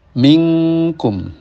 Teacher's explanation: Kemudian pada ikhfa dan iklab seperti minkum ya, suara dengung hampir-hampir keluar dari hidung